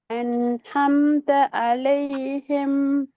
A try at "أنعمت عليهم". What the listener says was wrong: பிழை. ஹே தான் வருது. ரெண்டு ஐனையும் தொண்டையால உச்சரிங்க. அன்அம்த அன்அம்த அலைஹிம். ஐனுடைய இடம் எந்த இடம் என்று போன கிளாஸ் சொல்லி தரப்பட்டு போன கிளாஸ் சரியா தான் உச்சரிச்சீங்க.